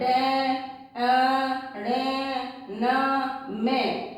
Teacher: नासिका व्यंजन तो होता है ड, ण, न, म, ये नाक से बोले जाते हैं, नाक के अंदर स्वर जाता है, इसलिए नाक से बोले जाते हैं।